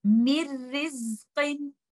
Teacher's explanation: Nun Sakina will be merged into letter Ra. And when I will be reciting this, you will not hear letter Nun at all.